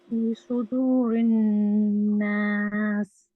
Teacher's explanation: فی کو کھینچنا ہے، سو کو موٹا پڑھنا ہے، رن ناس میں غنہ کرنا ہے